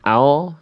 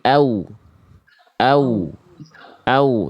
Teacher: Ketika huruf waw dalam keadaan bersukun diawali oleh huruf berharokat fathah, terdengar dibaca dengan vokal O, bukan vokal U. Harusnya vokal U.